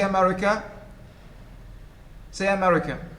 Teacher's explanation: say america say america the first the first and last sounds the pronunciation of the first and last sound is like that of the schwa